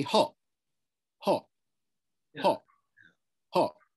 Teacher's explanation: that little stop at the end there is a glottal stop